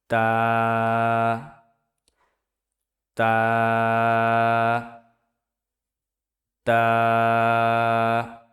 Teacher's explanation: তা উচ্চারিত হয় জিহ্বার আগা সামনের উপরের দুই দাঁতের গোড়ার সঙ্গে লাগাইয়া উচ্চারিত হয়।